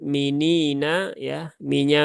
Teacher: minya biasa tipis saja tidak perlu tebal-tebal